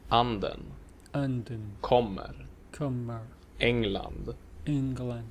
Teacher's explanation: the pitch on the stressed syllable goes up and then down again in the unstressed syllable that follows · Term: accent one